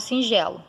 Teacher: então esse e ele é nasalizado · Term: nasalização